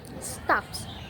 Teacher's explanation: The final S stays voiceless because P is also voiceless. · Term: progressive assimilation